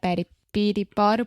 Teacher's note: your tongue is just up touching the top of your mouth really really fast and it's just a quick little tap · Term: flap T